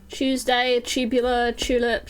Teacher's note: in the UK, anything beginning with TU is a chew sound